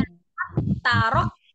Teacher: langsung tasdid ke huruf ta karena dia sama makhraj walaupun beda sifat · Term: idgham mutajanisain